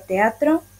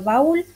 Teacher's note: una secuencia de dos vocales seguidas que forman parte de dos sílabas distintas se produce ya con secuencias de dos vocales abiertas por ejemplo